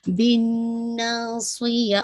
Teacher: اس کے اندر یہ کامل نہیں ہے بلکہ اکمل غنہ ہے، موسٹ کمپلیٹ غنہ ہے. ناصی، صاد کی کسرہ ہے تو جسے کہا جائے کسرہ لیکن پھر بھی آپ اس کو ہیوی کریں گے.